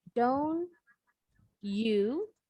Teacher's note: Kalau orang bule tadi ini penutur asli bahasa Inggris, ngucapin T ketemu Y jadi CH.